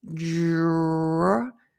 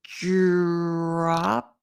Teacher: So it's not dra, but the D sounds like a J, like in judge or just. And then you have the R, dr.